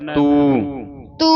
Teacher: ਇਹਨੂੰ ਤੂੰ ਨਹੀਂ ਪੜਨਾ ਟਿੱਪੀ ਲਾ ਕੇ ਟਿੱਪੀ ਤੋਂ ਰਹਿਤ ਪੜਨਾ ਤੂ ਤੂ ਹਾਂ ਇਥੇ ਟਿੱਪੀ ਨਹੀਂ ਲੱਗੀ ਟਿੱਪੀ ਤੋਂ ਰਹਿਤ ਪੜਨਾ